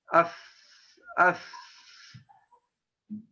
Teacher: Gigi di atas sama bibir dari bawah, tekan, harus tekan.